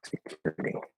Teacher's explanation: Also notice, of course, as I'm looking this up, that the T, at least in American English, in security is a flat D because it's at the start of a syllable that is not stressed